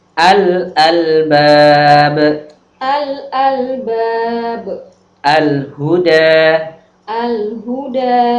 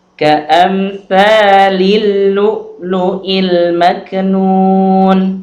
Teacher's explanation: Alif lam syamsiyah ini adalah suara lam yang harus dibaca idgham atau masuk melebur kepada huruf setelahnya. Yaitu ketika alif lam bertemu dengan huruf-huruf berikut, huruf ta, tha, shad, ra, ta, dhad, dzal, nun, dal, sin, dha, za, shin, dan lam.